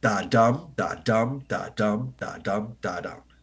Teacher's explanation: a rhythmic pattern in poetry with 10 syllables per line arranged in five pairs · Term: amic pentameter